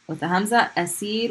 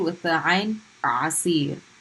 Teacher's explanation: The hamza is in your chest, and the ayn is in your throat.